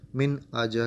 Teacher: ظاہر کر کے پڑھنا ہے اظہار کو. مطلب کہ یہاں پہ ہم نے کوئی غنہ نہیں کرنا، کوئی نیزل ساؤنڈ نہیں آئے گا